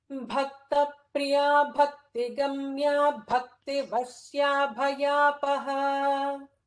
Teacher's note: notice that the first 4 namas all have bha. Bha is all Mahaprana there.